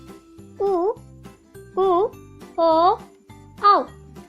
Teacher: जिन शब्दों के उच्चारण में हमारे होंठ गोल बनते हैं, उन्हें वृत्ताकार स्वर, और जिन स्वरों के उच्चारण में हमारे होंठ गोल नहीं बनते, उन्हें अवृत्ताकार स्वर कहते हैं।